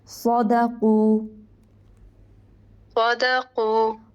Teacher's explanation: صاد بھی پر ہے، دال باریک ہے، قاف پر ہوگا